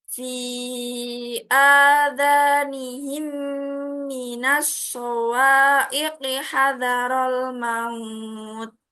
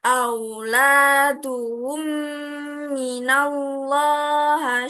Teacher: mim dibaca rangkap atau ditasditkan dengan mendengung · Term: Idgham Mimi